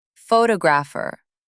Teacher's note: Stress on first syllable. Photographer. Stress moved to second syllable.